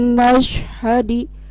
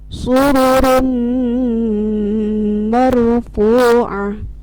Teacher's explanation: ada suara dengungnya karena mim termasuk huruf musyaddad atau gunnah.